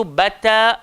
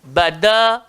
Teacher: Adapun huruf ta dan huruf dal, kita tahu hujung lidah, langgar belakang, gigi arnab atau gigi atas kita. Jadi huruf ta tu sifat dia nipis, huruf dal sifatnya sederhana.